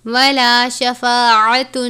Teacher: آپ نے عین کو اچھے طریقے سے پڑھنا ہے، حلق سے ادا کرنا ہے، جیسے آپ باریک ہا کو حلق سے ادا کرتے ہیں اسی طرح عین کو بھی آپ نے باریک پڑھنا ہے، الف کی طرح نہیں پڑھنا۔